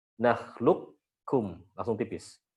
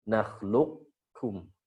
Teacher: Idgham naqis berarti qafnya masih ada sisa tebalnya.